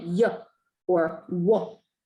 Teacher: Glides are sounds that, you know, it's very difficult to say them without saying that schwa sound at the end. So sounds like y or w, those are what we call glides.